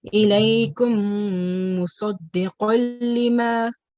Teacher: Yep, so we have meme sakin here, and then we have meme, and afterwards, so we have to do a gunna sound, hold the meme sound in for a little bit longer